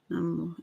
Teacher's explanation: The O sound is held much longer.